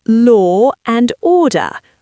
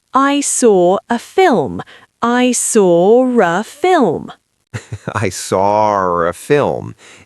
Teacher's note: If a word ends in a schwa sound or a generic or sound and the next word is a vowel, British people insert an R even if there is no R in the spelling. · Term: intrusive R